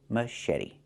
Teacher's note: The T makes a fast D, machete. This is a machete.